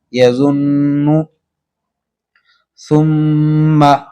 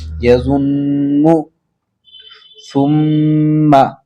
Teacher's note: یہ دونوں غنہ کے ساتھ میں پڑھ جائیں گے، نون بھی اور میم بھی